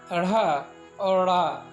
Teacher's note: इन व्यंजनों में 2 गुण पहले दोनों टावर के समूह के सदस्य हैं, दूसरा इनके उच्चारण में जिह्वा को तालु से झटके से टकराया जाता है, तब इनका उच्चारण होता है। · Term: द्विगुण व्यंजन